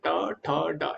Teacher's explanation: ट ठ ड ड में जीवा थोड़ी और पीछे घूम जाएगी जिस भाग को मूर्धा बोलते हैं